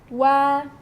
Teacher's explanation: ketika hendak melafadzkan kata wa, bibirnya dikumpulkan dahulu kemudian dilebarkan lagi.